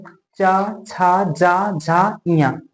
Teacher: के ऊपर जो ऊपरी सिरे में तालू होता है ना तालू हमारा जीभ ना जाके तालू को टच कर रहा है तालू को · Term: तालव्य वर्ण